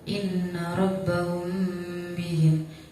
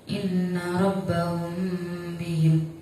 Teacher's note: Di situ ada mim mati bertemu dengan huruf ba, maka cara bacanya samar. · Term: ikhfa syafawi